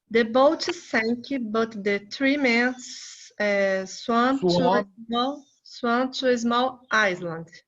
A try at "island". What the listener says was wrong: Never pronounce the S before L. Island. Island.